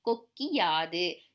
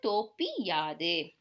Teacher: சொற்களை தொடர்ந்து யகரத்தை முதல் எழுத்தாக கொண்ட சொற்கள் வரும்போது குற்றியல் உகரத்தில் உள்ள உகரம் இகரம் ஆக மாறும் அந்த இகரம் தனக்குரிய ஒரு மாத்திரை அளவிலிருந்து அரை மாத்திரை அளவாக குறைந்து ஒலிக்கும் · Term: குற்றியல் இகரம்